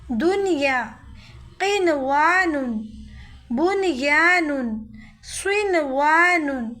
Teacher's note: قرآن مجید میں اس قسم کے صرف 4 ہی کلمات ہیں، جیسے دنیا، یہاں پہ ادغام نہیں ہوگا بلکہ یہ بغیر گنہ اظہار کی طرح پڑھیں گے، ظاہر کر کے